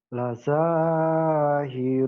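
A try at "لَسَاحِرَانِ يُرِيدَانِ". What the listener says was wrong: Yu-nya pendek. Lasahirani yuridani. Lasahirani yuridani. Lasa, Mas. Lasahiraninya pendek. Lasahirani yuridani. Lasahirani yuridani.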